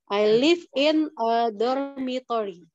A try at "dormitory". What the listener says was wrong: T-nya. Dormitory.